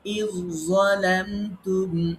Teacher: আমরা জালকে বাদ দিব, জোয়াকে আমরা পড়বো, জোয়াকে রিপিট করবো, ডবল করবো, তাসদিদ দিয়ে পড়বো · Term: ঈদগামে মুতাজানিসাইন